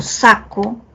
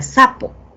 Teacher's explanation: ambos son oclusivos, pero mientras que en la primera palabra es un oclusivo velar, en la siguiente, en sapo, tengo un oclusivo bilabial, ¿cierto? El cambio de un fonema por otro da lugar a otra palabra con un significado distinto, ¿no?